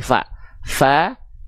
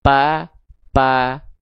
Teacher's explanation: Kalau huruf P yang nempelnya adalah bibir dengan bibir sehingga tidak keluar aliran nafas. Betul. Sedangkan huruf yang nempel ujung gigi seri atas disamperin sama bibir bawah bagian dalam yang basahnya keluar nafas. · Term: huruf fa